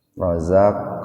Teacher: Rozak pakai zai itu, Pak, bukan rojak, bukan pakai jim. Rozak kol-kola sugro, huruf kop mati di tengah-tengah kata.